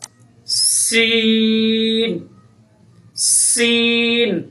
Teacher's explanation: سین جب ادا ہوگا تو سیٹی کی آواز پیدا ہوگی